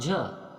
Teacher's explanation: अर्थात बगल से निकल जाए उसे पार्श्व व्यंजन कहते हैं और झ जो है आपका तालव्य सघोष और महाप्राण के अंतर्गत आता है